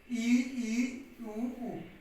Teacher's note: समृद्ध स्वर वे स्वर होते हैं जिनके उच्चारण में मुख द्वार सकरा रहता है